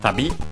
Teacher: accented on the last syllable, which means travel, trip, journey.